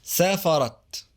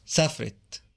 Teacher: Notice that the vowel of the second syllable is deleted, forming a consonant cluster with the beginning of the next syllable instead. And notice that the vowel of the final syllable is reduced to I.